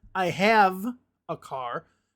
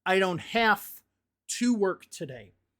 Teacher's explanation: I make an F sound instead of a V sound.